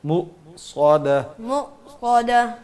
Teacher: جھٹکا بھی نہیں دینا جس طرح آپ کر رہے ہو، مو بالکل کلکلا ہی نہ ہو جائے